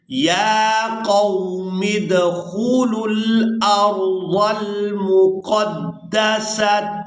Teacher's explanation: اب یہاں پر ہم نے واو کو ادا نہیں کرنا، واو رسم الخط ہے